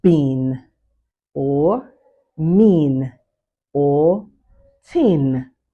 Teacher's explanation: Now before you are done articulating the vowel sound, the articulators quickly take on the nasal features of the adjacent nasal sound. Hence vowel nasalization process occurs.